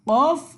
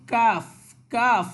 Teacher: কফ এটা গলা থেকে আর কাফটা হবে স্বাভাবিকভাবে সামনে থেকে বা হলকের মাঝখান থেকে যেটাকে বলি আমরা, অর্থাৎ কণ্ঠনালী থেকে একটু সামনে বাড়িয়ে, আবার মুখের ভিতরেও না, একটু মাঝামাঝি অবস্থায় রেখে কাফ উচ্চারিত হবে, ঠিক আছে।